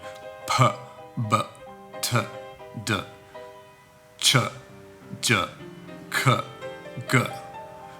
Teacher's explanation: these are called plosives, which means you stop the air and then release like a small explosion. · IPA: /p/b/t/d/ʧ/ʤ/k/g/